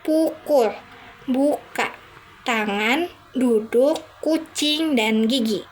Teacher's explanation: Konsonan dibagi menjadi beberapa jenis berdasarkan cara pembentukannya antara lain konsonan letupan atau bisa kita sebut sebagai plosif seperti beh de keh dan keh. Bunyi ini dihasilkan dengan menutup rapat saluran udara di mulut dan melepaskannya dengan cepat.